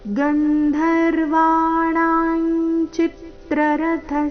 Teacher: ಚಿತ್ರ ಚಿ ಮೇಲೆ ಆಘಾತ ಮುಂದೆ ರಥ ಥ ಮಹಾಪ್ರಾಣ ರಸ್ವ